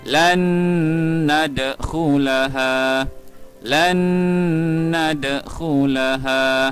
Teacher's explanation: kita kena masukkan huruf yang pertama, iaitu nun, ke dalam huruf yang kedua, iaitu huruf nun juga. Maka kita akan baca dengan dengung kadar 2 harakat.